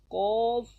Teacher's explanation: زبان کی جڑ اور تالو کے نرم حصے سے ادا ہوتے ہیں. ادا ہوتا ہے. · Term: حرف لغویہ